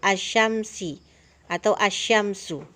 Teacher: cara membacanya, alif lamnya tidak dibaca dengan jelas, melainkan langsung dibaca huruf sesudahnya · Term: alif lam syamsiah